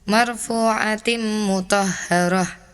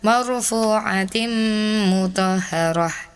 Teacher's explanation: Harusnya ditahan dua harakat dan dengung. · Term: idgham bigunah